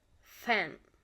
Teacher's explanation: labiodental, lower lip and upper teeth